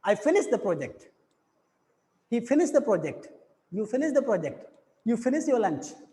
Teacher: हमारा जो टोन है हमारा डाउन हो रहा है, हमारा जो टोन है वो फॉल हो रहा है. That means in द first sentence we are having a falling intonation.